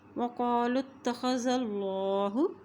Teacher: یہ دو نقطے والا جو قاف ہے اس کو موٹا ادا کیا جاتا ہے